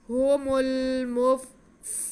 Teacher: واو ساکن سے پہلے دال پہ پیش ہے تو یہ واو مدہ ہو گئی، اسے ہم کھینچ کے پڑھیں گے۔ هم المفسدون، مدہ حروف کو ہم 2 حرکت کے برابر، یعنی کہ جتنی دیر میں ہم 2 حرکات پڑھتے ہیں زیر اور پیش، جتنی دیر میں ہم پڑھیں گے اتنی دیر میں ہی ہم مدہ حروف کو اتنا ہی کھینچیں گے، یعنی کہ 1 الف کے برابر کھینچیں گے۔